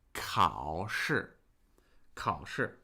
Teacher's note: The 考 sound has the consonant k, and then a diphthong, ao. It's a combination of ah and o into one new sound, ao.